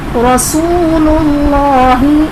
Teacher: رسول اللہ میں واو ساکن سے پہلے پیش ہے، واو مدہ کا قاعدہ اس لیے ایک الف یعنی دو حرکات کے برابر کھینچ کر پڑھیں گے